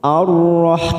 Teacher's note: Lalu yang pertama di sini ada huruf ro yang bertasdid, yang sebelumnya berharokat fathah. Maka kita baca tafkhim